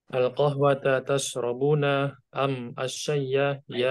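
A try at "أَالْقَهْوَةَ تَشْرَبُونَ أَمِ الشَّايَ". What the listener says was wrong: Itu bukan bacanya al-qahwata, itu A-nya memanjang itu karena pertanyaan ada A istifham bertemu dengan alif wasol pada alif lam ya, jadi dipanjangkan. Itu sudah pernah kita lewati materinya. Dipanjangkan alifnya itu. Al-qahwata, gitu ya. Sudah pernah kita lewati.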